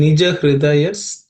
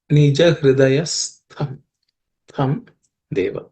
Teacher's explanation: This tha is the second letter in the tha varga or third class of consonants. It has to be aspirated.